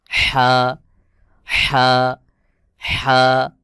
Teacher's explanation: হা উচ্চারণ হবে হলকের মধ্যখান থেকে